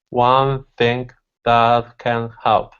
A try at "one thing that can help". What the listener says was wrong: Bring it together and move a little quicker. One thing that can help. You just have to you have to remember to keep moving through the words.